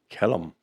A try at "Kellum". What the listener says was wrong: Kellum. Not Killam, but Kellum. I mean, it sounds like you're about to kill him.